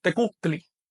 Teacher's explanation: en náhuatl hay un sonido saltillo que no tiene signo en español